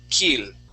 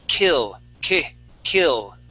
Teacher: it's a natural tendency for you to say kill okay but you want to push against that uh that uh tendency to say an e sound and use what's called a short I sound that short I sounds like this I I so this word